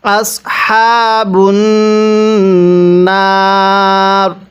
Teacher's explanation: আগে আমরা নুনের মধ্যে গুন্নাহ করব, এরপরে নুনের মধ্যে 1 আলিফ টান দিব